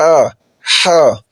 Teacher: عین اور ح، یہ گلے کے درمیان سے ادا ہوتے ہیں، نہ اوپر سے نہ نیچے سے، بلکہ گلے کے بالکل درمیان سے، وسط سے۔